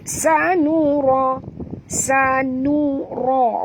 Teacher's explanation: ra ni tebal kerana di baris atas dan alif kecil menunjukkan bahawa ia adalah mad asli, ya. Ada alif sebelah ra ni.